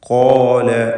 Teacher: തഫ്ഖീമോടുകൂടി സ്വരഭാരത്തോടെ ഉച്ചരിക്കേണ്ട അക്ഷരമാണ്. അതിൻ്റെ ദീർഘാക്ഷരമായ അലിഫിലും തഫ്ഖീം നിലനിൽക്കണം.